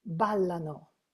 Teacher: you see the shift of the emphasis to the first syllable